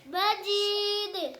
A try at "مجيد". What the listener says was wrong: मजीद, मजीद, मजीद ना, जीम पर शद ना हो। मजी, मजीद